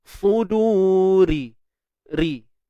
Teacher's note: Ra baris bawah ni jarang orang baca tebal